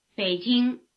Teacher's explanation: it comes before a different full tone and so it loses its rising tail